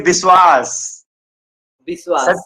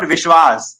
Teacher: go to the eastern regions like Odisha and Bengal, we find that the V is missing. So they say Biswas.